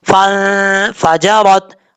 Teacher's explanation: نون ساکن کے بعد فا ہے، یہاں پہ غنہ کریں گے، ایک الف کی مقدار نون ساکن کا اخفا ہوگا۔ فن فا جا رت، را کے اوپر زبر ہے، را پر پڑھا جائے گا۔